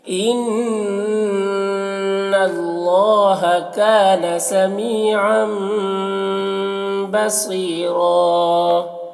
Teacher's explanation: با ہے، تنوین کے بعد آگے دیکھیے یہاں پر با ہے، تو تنوین کے بعد جب با ہوتا ہے تو وہاں پر چھوٹی سی میم بنی ہوتی ہے اور یہاں پڑھ کے میم کو پڑھا جاتا ہے غنہ اور اخفاء کے ساتھ میں